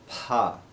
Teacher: hindi speakers and some other maybe telugu speakers will say fah for this sound but in sanskrit properly we say an aspirated pa sound